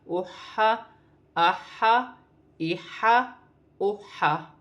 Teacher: حا جو ہے حروف حلقی میں سے ہے، حلق سے ادا کیا جائے گا